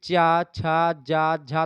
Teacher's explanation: तो आपकी तालू से जाकर के जीभ आपकी टकराती है